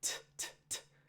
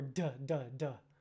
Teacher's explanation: So so for example, ta and da, in the case of English, the vocal cords are vibrating during the production of the d, the da, like while the actual stop is like being produced with the tongue